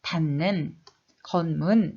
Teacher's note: 이 같은 잇몸 소리인 니은으로 발음되는 현상입니다. 자, 디귿, 티읕이 니은, 미음, 이응 앞에서 니은으로 발음되는 현상